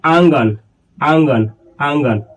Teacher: अनुनासिक में नाक और मुंह दोनों का सहायता लिया जाएगा। नाक और मुंह दोनों से हवा निकलेगा। उसे ही कहेंगे अनुनासिक।